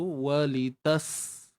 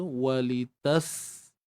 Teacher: Wa muncung litas, matikan sin tu, walitas. Kita alirkan suara dan nafas kita. Kerana pada huruf sin ni terdapatnya sifat rakhawah dan juga hams. Kita alirkan suara walitas.